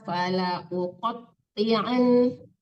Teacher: la-nya tidak panjang karena alifnya ada harokatnya.